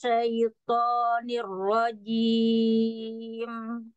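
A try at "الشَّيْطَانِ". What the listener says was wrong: Toh bibirnya jangan maju, toh jangan maju bibirnya. Minas syaitan, toh jangan maju.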